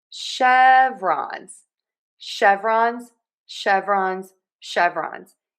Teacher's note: we are going to stress syllable number one in chevrons.